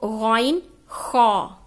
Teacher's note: غین خا یہ حلق کے اوپر والے حصے سے نکلتا ہے جو منہ کے نزدیک ہوتا ہے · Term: حروف ہلکی